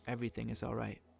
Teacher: in German sometimes there's a mini pause before each individual word